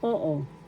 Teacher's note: First syllable, O is the accent. Oo. Second syllable is not accented.